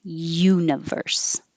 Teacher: You have to start with your tongue in the Y position. Universe. Universal.